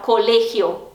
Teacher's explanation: O E, ele é mais fechado normalmente